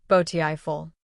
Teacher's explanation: The stress is at the beginning. Beautiful. Feel how the first part is stronger.